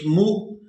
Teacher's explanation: ہم نے میم کو حمزہ ساکن کے ساتھ ملانا ہے، تو جھٹکے کے ساتھ ادا کرنا ہے